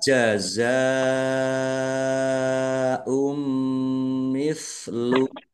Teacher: karena bertemu dengan huruf hamzah dalam satu kata, maka menjadi mad wajib muttasil. Dibaca panjang harus 5 harokat.